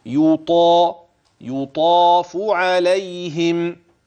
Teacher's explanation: جميل، واحدة: الألف التي بعد الطاء تابعة للطاء. إذن الطاء تفخم والألف بعدها مفخم، أما الياء والفاء فكلاهما مرقق